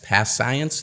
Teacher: we only pronounce the consonant sound once as the ending of the first word and the beginning of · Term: consonant to consonant linking